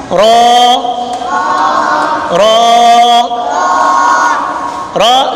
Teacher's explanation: را جو ہے یہ زبان کا کنارہ پشت سمیت دانتوں کی جڑ سے جب لگتا ہے پھر ادا ہوتا ہے. رو رو یہ زبان کا کنارہ نیچے والے زبان کے حصے کے سمیت، یعنی نیچے والا حصہ اور زبان کا کنارہ جب یہ دانتوں کی جڑ سے لگتا ہے تو پھر کیا ادا ہوتا ہے؟